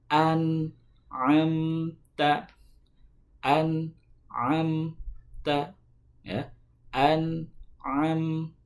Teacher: Nun dan mim itu tidak terlalu mengalir suaranya, tidak juga terlalu tertahan. Makanya sifatnya adalah at-tawassut. · huruf nun dan huruf mim itu bukan huruf qalqalah. Jadi tidak boleh dipantulkan atau tidak boleh diseret-seret. Tapi bacaan yang betul adalah an'amta, an'amta, ya, an'amta, ya, tidak boleh diseret.